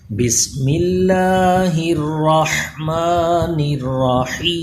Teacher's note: الرحمن اور الرحیم ان دونوں کے جو ہا کا حرف ہے اس میں سانس کی آواز آنی چاہیے، کچھ تکلف کے ساتھ سانس کی آواز اس میں مکس کیجئے، حلق کے درمیان والے حصے سے یہ آواز ہے۔